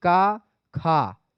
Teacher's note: जो दो आपके शुरू के होते हैं वो आपके अघोष होते हैं